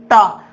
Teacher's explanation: अब टा, टा वर्ग का, अब अपन को टा नहीं पता तो देखो ये टा क्या अपने पास, ये मुड़ा हुआ है, ऐसे मुड़ा हुआ है, तो अपने पास जीभ क्या हो जाती है, मुड़ जाए, टा मुड़ती है ना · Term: मूर्धा